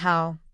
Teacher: Ow in how, ah to oo. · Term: Diphthongs